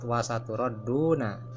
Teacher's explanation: ro di sini dibaca tafhim tebal. Alasannya atau sebabnya karena ro ini berharkat patah. Nah pada prinsipnya hukum bacaan ro dihukumi tafhim atau harus ditafhimkan atau tebal, yaitu apabila ro-nya itu berharkat patah ya.